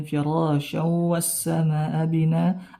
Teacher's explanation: mad bertemu hamzah dalam satu kata, mad wajib muttasil 4 sampai 5 harokat.